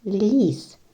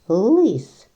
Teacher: лис перший звук л він твердий чи м'який другий третій с і в першій і в другій схемі є звук л тільки в першій він м'який ль а в другій твердий л